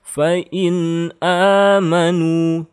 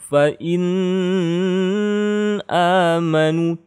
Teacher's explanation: Tidak boleh dengung, tidak boleh gunnah, tidak boleh panjang, tidak boleh berubah ya. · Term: izhar